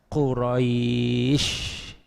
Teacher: awas shinnya tetap walaupun wakof, shinnya harus tengah lidah. Jangan Quraisy di gigi, tidak.